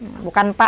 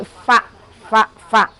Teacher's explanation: fa kedengarannya harusnya pa, tapi karena sifatnya hamas jadi nggak boleh pa.